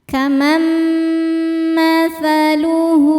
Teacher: Selanjutnya ada idgham bi gunnah karena nun sukun berhadapan dengan mim. Cara bacanya, nun ini masuk atau lebur ke mim, kemudian dengungkan tahan.